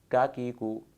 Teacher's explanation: کاف کا مخرج ہے زبان کی جڑ جب حلق کے کوے سے ذرا پیچھے ہٹ کر ٹکر کھائے تو کاف ادا ہوتا ہے۔ مخرج کے اعتبار سے اسے بھی لہاتیہ کہتے ہیں۔